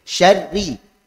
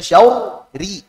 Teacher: Syarri tipis. Jangan sampai dibaca syauri.